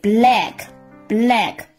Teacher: 然后发一个清晰音▁L，▁跟后面的元音来相连